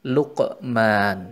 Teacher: bacaan Qolqolah Sugro kita temukan pada lafadz Lukman Hai lafadz Lukman yakni pada huruf qaf yang sukun di tengah lafadz tersebut dibaca dipantulkan dengan tipis saja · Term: qalqalah sugro